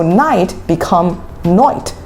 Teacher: Australians often flatten vowels and turn the I into a sound like oi.